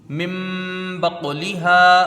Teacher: ہوگا، نون ساکن کے بعد با آیا ہے، یہاں اقلاب ہوگا، نون ساکن کو میم سے بدل کر غنہ کر کے پڑھا جائے گا